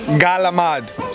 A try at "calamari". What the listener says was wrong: Calamari con la C. C, calamari. No, no, G. Calamari.